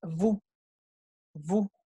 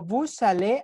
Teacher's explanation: Y cuando adelante hay una vocal y digo vous allez, aquí es donde sí hay liaison. Hay liaison porque tengo una consonante que era muda, ahora la estoy pronunciando.